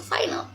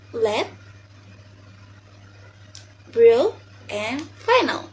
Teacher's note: Final ini kita menyebutnya adalah perbandingan dari L yang di depan dan yang di tengah nih. Jadi dia kayak tipis tapi tebal dikit gitu